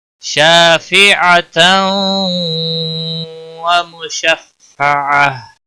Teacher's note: تنوین کے بعد حروف یرملون کا واو آیا ہے، ادغام باغنہ ہوگا۔ مشفعة، عین کسی بھی حرکت والے حرف کو کھینچنا نہیں، بولتا وقف کی صورت میں ہا ساکن ہوگا، وقف بالابدال ہوگا، ہا ساکن پڑھا جائے گا۔ · شاء الف مدہ ہے، ایک الف کے برابر کھینچ کر پڑھیں گے۔